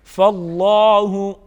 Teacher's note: लफ्ज़ अल्लाह के लाम को पुर पढ़ा जाएगा, कड़ी हरकत है, कड़ी हरकत को कड़ी हरकत के मुताबिक यानी एक अलिफ के बराबर खींच के पढ़ेंगे।